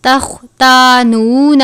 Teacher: تختانون خوا کو پر پڑھتے ہیں کیونکہ خوا بھی حروف مستعلیہ میں سے ہے. اس کو خا نہیں پڑھنا بلکہ خوا پڑھنا ہے پر کر کے